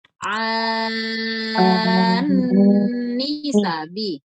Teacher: Kemudian ninya enggak boleh dipanjangkan nanti ya, habis dengung ninya satu ketukan saja.